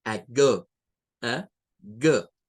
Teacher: Nótese que esa A no es el I, no es tampoco A, sino que aquí es el schwa.